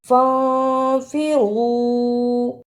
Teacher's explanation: نون ساکن کی آواز کو تھوڑی دیر ناک میں چھپا کر غنہ کرنا ہے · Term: اخفا